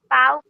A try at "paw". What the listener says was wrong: बेटा ये पाव नहीं है, पॉ है. सब लोग बोलेंगे पॉ.